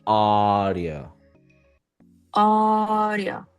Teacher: feel that difference between the first sound that is stress and it's long, and the other one, rio, very fast.